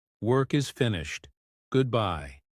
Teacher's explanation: Short, flat, no emotion. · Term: robotic version